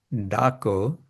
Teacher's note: So that do is this uh you see this retroflex da retroflex means there's a it uh is represented by the dot under the d which means it's with the tongue on the roof of the mouth rather than behind the teeth. So d Kina what's this dwani this sound shuni that I hear in a loud voice loud sound d uh calling tas And that we saw before it's stretched outsta which means quickly.